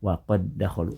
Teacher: huruf namun dibaca menjadi satu huruf yang bertasdid ditulisnya waqod dakholu dibaca dengan cara digabungkan menjadi satu huruf Dal yang bertasdid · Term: idgham, idgham mutamathilain